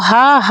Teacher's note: हा बोलने से क्या किसका उच्चारण हो रहा है, कंठ का उच्चारण होता है, तो कंठ हो जाएगा।